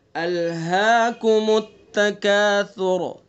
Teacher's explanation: الہاکم التکاثر، سا کو نرمی سے پڑھنا ہے ہمیں، را کو پر پڑھنا ہے، اور سا کو نرمی سے پڑھنا ہے، تکاثر نہیں پڑھنا ہے، سین نہیں پڑھنا ہے، سا پڑھنا ہے۔